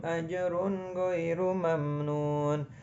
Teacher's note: Nah, ajrun gha, huruf ro berharokat dhammatain diikuti huruf ghain. Namanya izhar, artinya terang atau jelas. Jadi tidak dibaca dengung